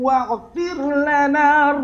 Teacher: Ghain di sini ustaz dengar tadi macam bunyi ain.